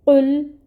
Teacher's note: जैसे कुल को कुल पढ़ देना, यानी यहाँ पे क़ाफ मोटा आना था और इसको हमने काफ बारीक डंडे वाला पढ़ दिया, तो ये लहन जली है, ये हराम दर्जे की गलती है।